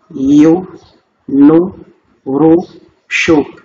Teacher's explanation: le son qui correspond à la voyelle Dhamma en français, c'est le son OU.